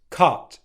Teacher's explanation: Where the /ʌ/ sound the tongue is further back in the mouth /ʌ/ As in 'cut' Okay. And my lips aren't as wide.